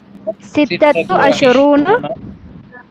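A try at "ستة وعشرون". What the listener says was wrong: व इशरूना, अशरूना नहीं, इशरूना आइन पे जेर आ जाए जी।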